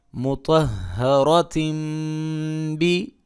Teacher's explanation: اقلاب ہو رہا ہے، تنوین میم کے ساتھ بدل گئی ہے